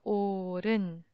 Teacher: the hu sound disappeared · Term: assimilation